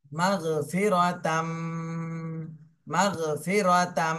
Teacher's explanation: তানবিনের পরে ঈদগামে বা গুন্নার হরফ আসছে, এই জন্য গুন্না সহ মিলাতে হবে।